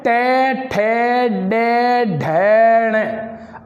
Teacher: आप अपनी जीभ को एक बार उच्चारण करके देखें तो जहाँ से हम टे उच्चारण कर रहे हैं, टे में जीभ का अग्रिम भाग, आगे की जीभ की नोक है, वो जहाँ टकराती है उस भाग को मूर्धा कहते हैं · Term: मूर्धन्य वर्ग